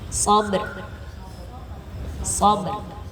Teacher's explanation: Jadi tipis tapi tetap kita merasakan bahwa kita mematikan huruf rohnya, jangan menghilangkan rohnya ya.